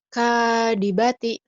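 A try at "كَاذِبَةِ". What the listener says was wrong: Kazal. Kazibati. Zal ya. Kazibati.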